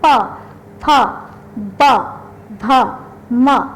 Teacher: प बोलते समय हमारे दोनों ओठ जुड़ जाते हैं, इसीलिए इसका उच्चारण स्थान ओष्ठ है, यानी कि प, फ, ब, भ, म, इसमें हमारे दोनों ओठ जुड़ रहे हैं, इसीलिए इसका उच्चारण स्थान ओष्ठ है।